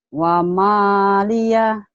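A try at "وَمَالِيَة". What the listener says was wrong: Wamalia. Jangan ada haknya lagi. Wamalia.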